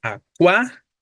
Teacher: el acento va sobre la a y justo por esa razón es que acentuamos la palabra acuático porque es esdrújula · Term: palabra esdrújula